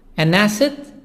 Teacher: make link between N and A